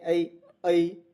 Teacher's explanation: उच्चारण गति क्या है? अ से ई की ओर, तो यानी ऐ ऐ बोल रहे हैं, तो अ और ई भी आ रहा है, यहां से यहां तक उसका उच्चारण हो रहा है। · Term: संध्या अक्षर